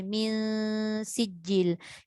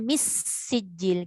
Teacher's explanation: Kita tak baca mis sijil. Kita tak bunyi pun pada sin. Kita dengung pada nun tu dulu. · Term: ikhfa